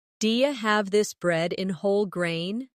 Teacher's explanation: In connected speech, do you becomes diya.